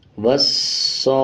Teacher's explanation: صاد کے اوپر شد ہے، مضبوطی کے ساتھ ادا کریں گے، کھڑا زبر 1 سیکنڈ کھینچیں گے اور بڑا مد 5 سیکنڈ کھینچیں گے۔